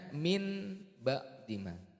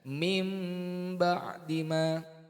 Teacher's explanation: Bibirnya dirapatkan serta mendengung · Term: iklab